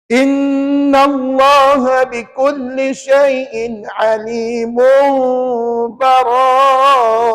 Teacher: Alimun, mum tu adalah hukum iklab yang puan-puan kena dengung 2 harakat.